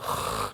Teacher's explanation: dilatih untuk membacanya ko seperti seseorang mendengkur